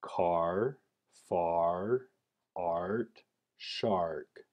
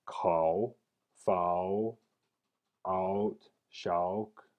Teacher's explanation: Now R is usually misarticulated as ow. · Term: vocalic R